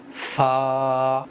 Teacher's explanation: सनाया औलिया की नोक नीचे के होंठ के तरी वाले हिस्से पर लगाएंगे · फा सनाया उलिया की नोक नीचे के होंठ के तरी वाले हिस्से से मिलकर अदा होता है। फा सनाया उलिया की नोक, सनाया उलिया ये ऊपर के सामने के दो बड़े दांतों को कहते हैं।